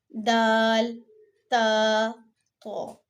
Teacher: جب زبان کی نوک سامنے والے اوپر کے 2 دانتوں کی جڑ سے لگتی ہے تو یہ 3 حرف ادا ہوں گے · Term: حروف نطقیہ